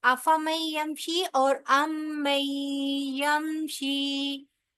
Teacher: ये ऑलमोस्ट अफमई यमशी और यमशी, ये दोनों जो है वो ऑलमोस्ट सेम सॉर्ट ऑफ इनकी प्रोनाउंसिएशन है, सिर्फ यह मी मुशद्दद है तो यहाँ पर गुन्ना किया जाएगा